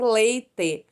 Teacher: O ditongo decrescente é quando temos a vogal primeiro e a semivogal depois, como em leite. Então, esse E é pronunciado e o I, né, ele é semi-pronunciado